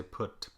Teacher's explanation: Some dialects of English will not round this quite so much, and so I say put. Some people will say put, with slightly less rounded lips